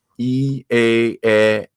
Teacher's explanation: your tongue is progressively going lower